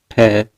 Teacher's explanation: ठ का उच्चारण स्थान मूर्धा है।